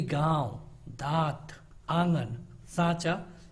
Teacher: अनुनासिक ऐसे स्वर होते हैं जिनको बोलने के लिए नाक और मुंह दोनों की जरूरत पड़ती है, दोनों को एक साथ यूज किया जाता है, इसीलिए इनको हम कहते हैं अनुनासिक।